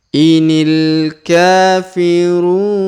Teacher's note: huruf ru kita panjangkan dua harakat karena di depan huruf ru terdapat wau sukun